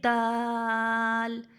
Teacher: دال کا مخرج کیا ہے؟ زبان کی نوک اور ثنائے علیہ کی جڑ. زبان کی نوک اور ثنائے علیہ کی جڑ.